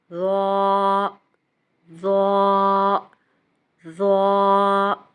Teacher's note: ظا کو پڑھتے ہوئے بھی ہماری زبان کا سرا سامنے کے دانتوں کے کناروں سے ٹچ کرتا ہے اور ہونٹوں کا شیپ اس طرح سے رکھ کے ہم ظا کی ٹھیک ادائیگی کر پائیں گے۔